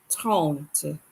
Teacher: The R in French is very guttural. So if you can't get that R, don't say H or don't make it a W.